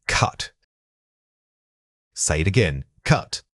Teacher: This vowel is often tricky because it's quite central. Try picturing the sound of a slight sigh or an sound that gets clipped suddenly by the final consonant.